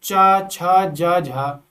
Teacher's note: तालु से जो तालु से बोली जाने वाली ध्वनियां होती है इन्हें स्पर्श संघर्षी भी कहते हैं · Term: तालव्य ध्वनियां